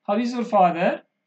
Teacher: For example, your father's friend may ask you like this, how is your father? That is a rising tone, since it is a friendly manner question.